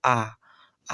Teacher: विवृत्त जो स्वर है वो मुख पूरा खुल जाता है। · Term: विवृत्त स्वर